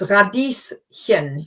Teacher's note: radies just happens to end with an S, so it looks like as if it was a sh sound, but it isn't